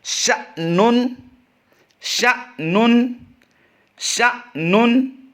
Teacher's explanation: اگلا لفظ ہم جھٹکا دے کر پڑھیں گے، الف پر جزم ہے، الف نہیں رہا بلکہ یہ حمزہ ساکنہ بن گیا